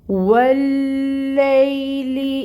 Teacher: واو کی ادائیگی کے لیے پہلے اپنے لپس کو راؤنڈ کرنا ہے، ہونٹ گول کر کے واو کی ادائیگی ہوتی ہے، اور فتح کی حرکت کے لیے منہ کھولیں گے، ایک حرکت ادا کریں گے زبر کی۔